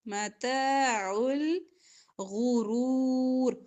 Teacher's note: متاع الغرور غین را موٹا پڑھیں گے